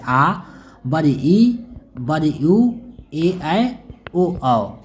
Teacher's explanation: दीर्घ स्वर उसे कहते हैं जिनके उच्चारण में हस्व स्वर से अधिक समय रखता है यानी दो मात्रा का समय रखता है